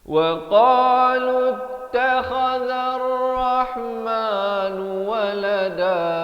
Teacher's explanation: Jadi lam bari dhammah terus di atas ta. Wa qalu takha di hujung kerongkong, zal di hujung lidah. Takhazar zal bari fathah di atas ra di sini.